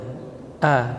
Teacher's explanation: huruf hamzah itu huruf syiddah dan jahar, keluar dari pangkal tenggorokan, a tipis, ya.